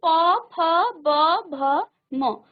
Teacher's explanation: और अब देखिए प वर्ग, जब आपने प फ ब भ म, अब देखिए आपकी जीभ, आपके होंठ जो है एक दूसरे को स्पर्श कर रही है, इसलिए इसका उच्चारण स्थान है ओष्ठ